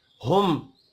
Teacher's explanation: मीम साकिन के बाद जीम है, इज़हार शफ़ी होगा, गुन्ना नहीं होगा।